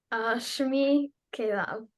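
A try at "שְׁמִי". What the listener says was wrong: Tov Ma'od.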